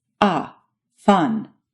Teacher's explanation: this vow is similar to english's a as in father but it's a bit more forward in your mouth